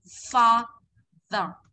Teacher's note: Không phải pha giờ mà là môi răng này